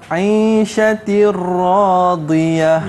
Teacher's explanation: Tak boleh dibaca secara dengung. Jadi kita masukkan nun sakinah atau tanwin ke dalam huruf ra dan lam tanpa dengung. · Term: idgham bila ghunnah